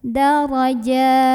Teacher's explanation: Maka apabila kita berhenti, jimnya ini boleh dibaca panjang 2, 4 atau 6 harokat, tapi harus sama atau konsisten dalam satu kali membaca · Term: mad arid li sukun